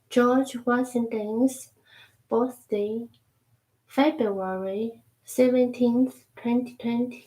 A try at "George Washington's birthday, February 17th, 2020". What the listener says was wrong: Perfect. 100%.